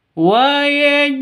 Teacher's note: wa-aj'al harus dipantulkan pada jim. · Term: qalqalah sughra